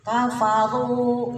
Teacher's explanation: Nah, ru-nya 2 harokat, kemudian tafhim tebal ya. Ro ketika di domah atau di fathah itu tafhim, namanya tafhim itu tebal.